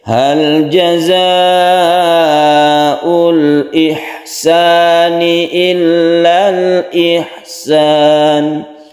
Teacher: Hal jazaa'ul ihsani, haknya hak itu ditenggorokan harus tipis dan bersih, kemudian jaza ini panjangkan karena mat wajib mutasil